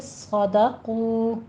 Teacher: صاد کو پر پڑھنا ہے، سیٹی کی آواز آنی چاہیے